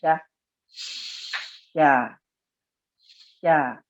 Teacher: Tapi dengan sya ini dia punya sifat khusus namanya tafashi. Tafashi itu as-sautul muntashir, suara yang tersebar di dinding gigi kita itu suara sya. Jadi kalau kita ucapkan sya, dia maftuh berbaris fathah.